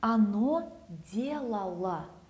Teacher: unstressed O sounds like A